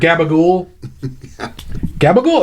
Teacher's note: if you talk to people from New Jersey, they don't pronounce the vowels at the end